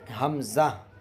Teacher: شروع حلق سے حمزہ ادا ہوتا ہے۔